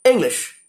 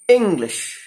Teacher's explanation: the in part is stressed or accentuated or we take a longer time to utter that sound when compared to the unstressed